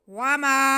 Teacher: वमा हुआ, जी वाव पे ज़बर है, मीम पे भी ज़बर है और साथ में अलिफ है, तो ये अलिफ मद्दा हो गया। मीम की आवाज़ को हम एक अलिफ के बराबर खींचेंगे। वामा, आवाज़ को नाक में नहीं लेके जाना।